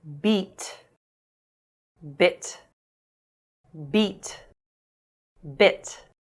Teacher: When occurring in minimal pairs, /i:/ is longer and /ɪ/ is shorter. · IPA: /i:/ /ɪ/